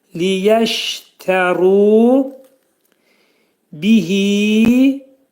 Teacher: Ru qalın oxunacaq. Ra hərfinin məxrəci dil yuxarı üst dişin altında olan damağa dəyir və qalın oxunur.